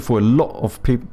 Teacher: I didn't pronounce the T in the lot there.